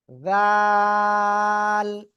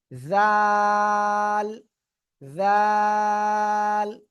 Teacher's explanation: জিব্বার আগা, সামনের উপরে দুই দাঁতের আগা এর সাথে লাগাবো, লাগিয়ে আমরা উচ্চারণ করব নরম সুরে।